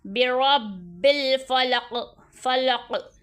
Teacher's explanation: جب قوف کو ہم ساکن کر دیں گے وقف میں ساکن، تو یہاں پہ قلقلہ خوب ظاہر کریں گے۔ برا بل، یہاں پہ مشدد تو خوب جماؤں کے ساتھ، اور یہاں پہ حرف قلقلہ ساکن ہو جائے گا تو خوب ہلا کر ظاہر کریں گے۔